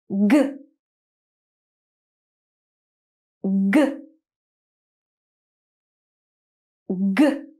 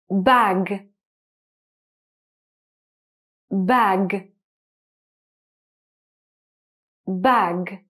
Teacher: Same position, your tongue is up there, but you're not going to push out some air. This time you're going to use your voice and feel the vibration in your throat so you produce a sound. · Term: final G sound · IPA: /g/